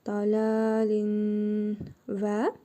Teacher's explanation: İdğamı məal qulna qaydasına görə tənvindəki nun hərfini burnumuzda tələffüz edərək bir əlif miqdarı uzadırıq. Vav hərfini isə şəddəli tələffüz edirik.